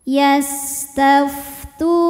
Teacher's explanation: sebab ada wau sukun yang sebelumnya damah maka panjang Tunya dua harakat